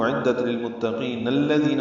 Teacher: اگر ملانا ہو تو اعدت للمتقین الذین ہوگا، نون کو الذین کے لام سے ملائیں گے